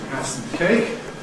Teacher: So we’ve got strong form [sʌm], weak form [səm], syllabic consonant form [sm̩]